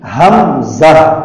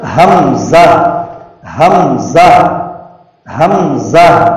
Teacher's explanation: پہلی ہا بھی ادا ہو، آخر کی ہا بھی ادا ہو